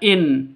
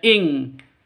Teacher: nun mati bertemu dengan kaf, samar didengungkan, siap-siap ke huruf kafnya, tanwinnya ditambah dengan ng.